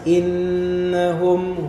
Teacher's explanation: mati nah Mim mati ketemu dengan ha Nah ini masuk dalam hukum mim mati yang disebut izhar syafawi karena mimnya ini jelas mimnya dibaca jelas